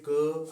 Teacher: क वर्ग का उच्चारण होता है कंठ से। बोल के देख लीजिए, क आवाज गले से आ रही है, ख कंपन होती है यहाँ पे, ठीक है।